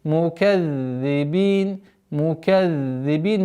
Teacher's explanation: Межзубное произношение «да», обратите внимание. И при остановке у нас уходит фатха в сукун.